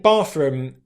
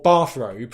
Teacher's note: my tip of my tongue won't actually come out and stick between my teeth. It might stay behind the teeth here to make it easier for me to say that R sound that comes after it. Okay, this is an example of what's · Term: assimilation